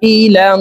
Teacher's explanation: আইনকে 4 আলিফ টেনে পড়বো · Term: মুত্তাসিল